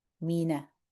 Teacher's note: we don't want to say minnar. We want to keep the mi separate from the na, not min, but mi.